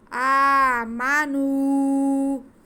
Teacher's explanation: نو کی آواز ناک میں نہ جائے، آواز ناک میں بالکل نہیں جانی چاہیے، منہ کو کھول کے تھوڑا گول کر کے پیش ہے، اس لیے اسے ادا کریں۔